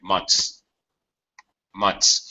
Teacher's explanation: when we have three consonants we just lose the middle consonant sound and reduce pronunciation because it's hard for us to pronounce even though we're native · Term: reduction, Reduction